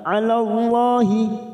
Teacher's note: lam jalala karena didahului fathah kita baca tafkim